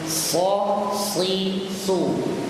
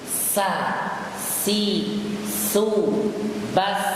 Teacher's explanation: Antum merasakan ketika kita mengucapkan huruf so, suara naik. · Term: tafkhim tebal